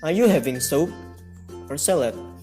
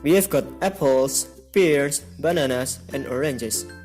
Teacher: The intonation rises and then falls. We use rise-fall intonation for choices, lists, unfinished thoughts, and conditional sentences.